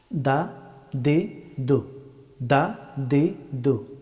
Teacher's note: দাল হরফটি উচ্চারিত হয় জিহ্বার অগ্রভাগ এবং সামনের দুই দাঁতের গুড়ি